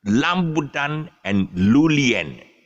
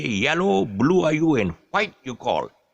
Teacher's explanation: the Chinese inability to pronounce the R sound. So all the R's become L.